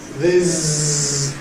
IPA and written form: ðɪz (this)